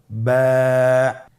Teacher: এর মাখরাজ হলো আপনার 2 ঠোঁটের বিজা অংশ থেকে আপনি উচ্চারণ করবেন।